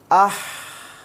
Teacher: अब अभी हमने बताया हम्स में क्या होगा कि आवाज़ पस्त हो जाती है, आवाज़ में कमज़ोरी होती है, आवाज़ में ज़ौफ़ होता है, अदा करते वक्त सांस बाकी रहती है लेकिन आवाज़ डाउन होती चली जाती है पस्त